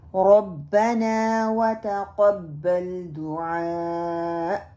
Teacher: تقبل قاف جو ہے ہیوی ہونا چاہیے، اس کو ہم لائٹ کاف میں بدل دیتے ہیں. دعا کو دعا اور حمزہ کو بھی کٹ کر دیتے ہیں، اور جو عین ہے اس کو حمزہ میں بدل دیتے ہیں.